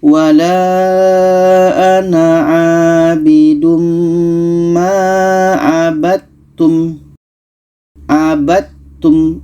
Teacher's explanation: Dal ini ada qalqalah, sedangkan ta ini bukan qalqalah sifatnya. Maka dal yang asalnya hukum qalqalah tidak jadi kita masukkan ke ta.